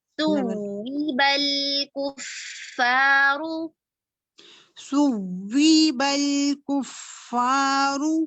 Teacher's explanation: دیکھیں آپ دو کاؤنٹس تو ہم مد میں کرتے ہیں نا، حروف مدہ میں. یہاں پر واو تشدید کے ساتھ ہے تو ہم یہاں پر آواز کو اٹھاتے ہیں، نبر کرتے ہیں